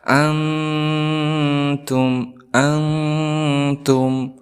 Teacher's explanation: Karena nun dan ta ini makhrajul hurufnya tidak jauh, maka tidak boleh dibaca dengan ang secara berlebihan. Ang, tetapi ang seperti itu. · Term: Ikhfa aqrab